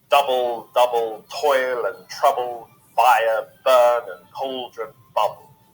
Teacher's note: the 2-syllable long trochee, a stressed syllable followed by an unstressed one